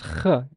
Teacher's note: We produce the sound by narrowing the passageway between the back of the tongue and the velum, thus creating friction as the air passes through.